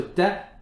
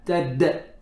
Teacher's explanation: you've done hams on the first ta, a little bit too much, but the dal does not have hams